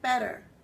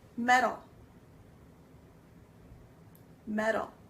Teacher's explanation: we end up making it sound like a d instead of a t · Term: soft t